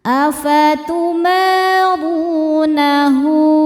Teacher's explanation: Huruf ro dibaca tafkhim karena berharakat dommah maka rnya tebal.